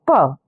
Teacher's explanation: प भी आपका ओष्ठय होता है।